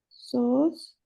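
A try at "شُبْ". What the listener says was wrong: नहीं नहीं, सोच नहीं है, शुभ है ये, शुभ। जिसको अक्सर बोलते हैं सुबह, सुबह नहीं होता है एग्जैक्ट वर्ड, शुभ। यानी कि यहाँ देखिए वो जज्म नहीं, देखिए बौ जो है, बौ के ऊपर जज्म है,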